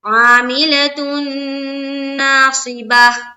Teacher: پھر نا میں الف مدہ ہوگا اس لیے کہ الف خالی سے پہلے زبر ہے، صاد کو زیر کی حرکت کے ساتھ جلد پڑھیں گے، با کو زبر کی حرکت کے ساتھ جلد پڑھیں گے، اور تا چونکہ گول ہے اس لیے اس کو ہائے ساکینہ بنا دیں گے۔